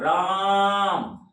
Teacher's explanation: जब राम बोले तो रा पर अधिक जोर पड़ रहा है